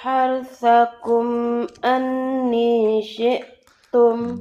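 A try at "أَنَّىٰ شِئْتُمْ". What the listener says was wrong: Bukan anni, anna syi'tum.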